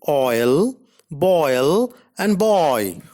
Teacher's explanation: a glide from a back rounded vowel between open and half open to a centralized front unrounded vowel just above the half close position.